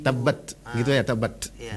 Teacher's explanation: Misalnya huruf ba, ada 6 sifat. Sifat pertama jahar, tidak berdesis dia suaranya. Sifat kedua syiddah, nggak boleh jalan suaranya.